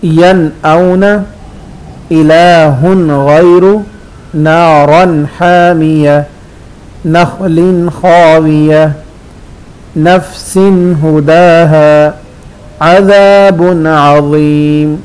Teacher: तो इन तमाम मिसालों में तनवीन है या नून साकिन है, उसके बाद हरूफ हल्की आ रहे हैं तो गुन्ना नहीं करते, नून को अपने मखरज में वाज़े पढ़ते हैं